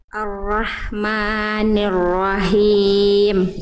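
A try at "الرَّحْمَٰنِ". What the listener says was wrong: Sip ya, nanti dibiasakan maknya masih agak kepanjangan kadarnya. 2 harokat. Ar-Rahmani. Mani, jangan Ar-Rahmanir. Nah, itu masih bablas tuh sedikit.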